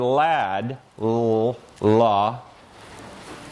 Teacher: Its articulation involves taking the tip of the tongue, touching it against the alveolar ridge, that's that ridge at the roof of your mouth right behind your teeth, leaving the sides of the tongue down, closing up the nose by raising the velum.